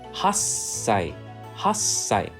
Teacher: When t is followed by a sa sound, say the preceding letter ha, and then hold the s sound for one beat before saying sai. So hold the S sound after saying ha.